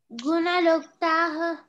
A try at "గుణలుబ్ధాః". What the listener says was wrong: తా కాదు గుణలుబ్ధాః